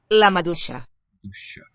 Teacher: the ya just assimilated to the sha, because it sounds kind of long there.